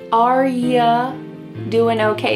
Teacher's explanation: We already talked about how sometimes you becomes ya, and this is extremely common as we're speaking quickly and talking with people in a comfortable situation.